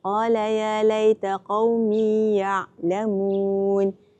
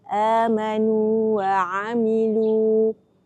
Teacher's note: dua huruf bertemu namun dibaca dengan izhar supaya madnya tidak hilang dengan sebab idgham